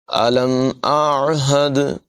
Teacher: حمزہ اور عین دونوں کی آواز علیحدہ ہے، دونوں کی آواز نمایاں کریں گے۔ حمزہ سے آواز شروع کریں گے اور عین پر ختم کریں گے۔